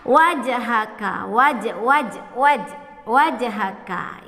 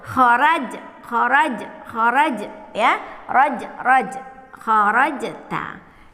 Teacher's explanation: Huruf jimnya sukun, huruf jimnya sukun. Kita baca qalqalah dengan memantulkan huruf jimnya